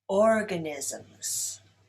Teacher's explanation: Organisms is stressed on the first syllable.